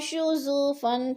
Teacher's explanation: نون ساکن کے بعد شین حروف اخفا میں سے ہے تو ادھر غنہ کریں گے، ناک میں آواز لے جائیں گے